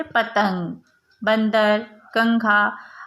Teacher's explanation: यह अनुस्वार का चिन्ह होता है. इसके उच्चारण में कंठ और नासिका में ध्वनि महसूस होती है.